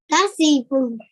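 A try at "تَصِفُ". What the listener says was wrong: Okay, again, Sad, thick letter, so make your mouth round. Tasifu. Tasifu.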